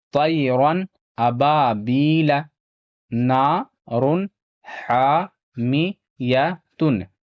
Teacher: یہاں الف سے پہلے زبر ہے، الف مدہ تھوڑا کھینچ کر پڑھنا ہے۔ یا ساکن سے پہلے یہاں زیر ہے، یا مدہ ہوگا، اسے بھی تھوڑا کھینچ کر پڑھنا ہے۔